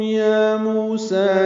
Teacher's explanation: مو اور سا کھڑا زبر، دو حرکات یہ لمبے کرنے ہیں